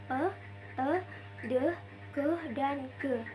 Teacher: bunyi yang airflow-nya ditutup total dahulu terus dilepas